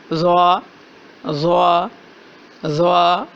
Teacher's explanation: ظا موٹی آواز ہے اور نرم، جس طرح کہ ثا اور زال کی ادائیگی کی تھی تو ہم نے اپنے منہ کو ڈھیلا چھوڑ کے نرمی کے ساتھ ان کی ادائیگی کی تھی، سیٹی کی آواز بالکل ختم کی تھی۔